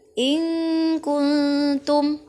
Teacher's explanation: harus dibaca samar atau antara bacaan zhar dan bacaan Idgham · Nun mati bertemu dengan kaf, maka dibaca berdengung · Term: ikhfa